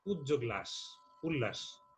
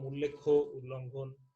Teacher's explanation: ত ও দ এর পর ল থাকলে ত ও দ এর স্থলে ল উচ্চারিত হয়।